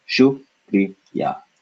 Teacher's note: So we have a K sound with no air, followed by a Spanish R, followed by a I. So if we were to write this in a Roman alphabet, this would be spelled Kri.